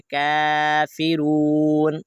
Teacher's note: کاف کو لمبا کرنا ہے کیونکہ کاف کے اوپر کھڑا زبر ہے